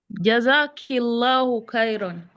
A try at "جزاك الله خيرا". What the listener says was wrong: Jazakillahu khayra. Is to work on the kha. It's not K. You're still pronouncing the kha as a ka. It's not supposed to be. So you have to work on the throat. Your throat must vibrate when you pronounce it. Jazakillahu khayra.